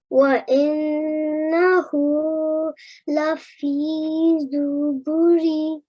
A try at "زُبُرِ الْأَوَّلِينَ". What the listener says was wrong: Now, this ra here, we need to join to the lam on the next line. Okay, so we would say Zuburil.